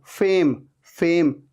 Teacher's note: ऊपर के दांत नीचे वाले लिप पे आ रहे हैं, टच हो रहे हैं